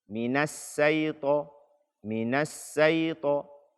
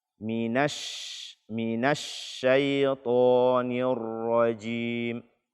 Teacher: Salah satu sifat yang hanya dimiliki oleh huruf shin. Angin yang keluar ketika kita membaca shin tersebut, dia berpencar. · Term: tafasyi